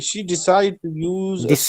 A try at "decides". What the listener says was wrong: Decides. There is as. Remember, I said to you many times, all of you, if there is as or if there is letter D, you must pronounce it clearly and correctly so that listeners can understand.